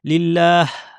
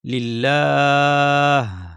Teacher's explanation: শেষে যখন হা দিয়ে থামবো তখন যেন আমাদের হাটা স্পষ্ট হয়, যেন শুধু বাতাস হয়ে না যায়।